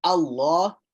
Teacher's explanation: Sometimes we pronounce the lam in Allah's name like Allah, tafkhim, really thick and full.